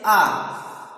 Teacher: ना हमारे होंठ की आकृति ना गोल है ना ही फैली हुई है, दोनों तरह से ये आकृति बन रही है। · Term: वर्तुल अवर्तुल